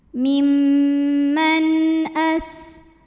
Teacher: sin punya sifat sofir, salah satu sifatnya sofir ya, yaitu ada desisan seperti suara ular